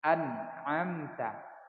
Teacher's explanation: Setelah ditekan lalu ditahan. Jangan sampai ada pantulan pada huruf nun ini.